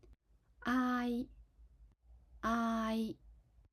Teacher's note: We need to start with projecting the aa sound out then switch I sound When we switch to the I sound, we need to pull the sound back in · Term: aai